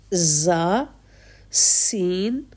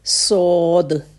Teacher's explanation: زا اور سین باریک ہے اور صاد بہت موٹا حرف ہے